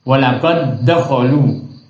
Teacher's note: Walaqad dakhalu, tidak boleh seperti itu, harus diidghamkan. Memasukkan suaranya dal yang pertama ke dalam dal yang kedua.